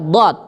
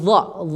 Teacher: di bagian tepi lidah menyentuh gigi geraham atas baik tepi kanan atau tepi kiri ya itu tempat keluarnya satu huruf yaitu huruf dad